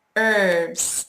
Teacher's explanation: I don't say the H. For some reason, we don't.